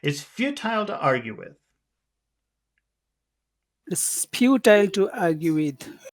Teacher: the only two big sounds are few and R